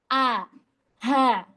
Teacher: Pangkal tenggorokan dia keluarnya sama seperti huruf H. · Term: huruf hamzah